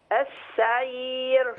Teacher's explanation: اخلي بالي من الراء ترقق في كلمة السعير